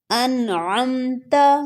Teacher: نون ساکن تو ہے لیکن اس میں صرف اظہار ہوگا کیونکہ اس کے بعد حروف حلقی میں سے عین ہے، تو اس کو ہم نہیں کھینچیں گے.